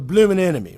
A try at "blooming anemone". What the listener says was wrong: No, not a blooming enemy. Blooming anemone. You got to put the "and" part for enemy. Otherwise, it's just a blooming enemy, which is what you said.